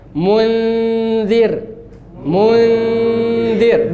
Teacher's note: Di ujung lidah bertemu dengan ujung gigi atas. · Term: zal